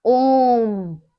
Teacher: जब ओम को हम उच्चारित करते हैं तो क्या है, बहुत देर तक खींचते हैं ना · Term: प्लुत स्वर